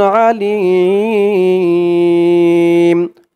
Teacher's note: এই মিমকে ধরবে মিমের উপরে দুই পেশ তানবিন সাকিন হয়ে যাবে আলিম তিন আলিফ টান মধ্যে আরজি অকফ করার কারণে